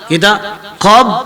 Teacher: Kita mesti qab itu kita tak boleh qalqalah dia. Huruf ba itu kita buang dia punya sifat qalqalah.